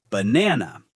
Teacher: The stress is on the second syllable. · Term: word stress